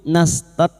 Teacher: kaf sukun yang memiliki sifat hamas dan syiddah